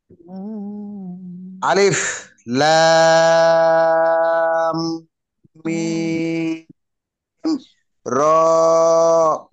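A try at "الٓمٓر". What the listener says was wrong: র এর ক্ষেত্রে আরেকটু কম টান দিব যেটা এক আলিফ। আলিফ লাম মিম র।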